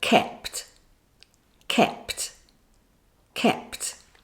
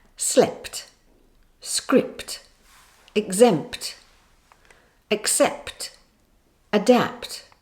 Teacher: there's only one main release of air at the end